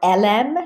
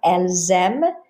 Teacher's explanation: The S would carry over in liaison so that you would be able to tell if it was singular or plural.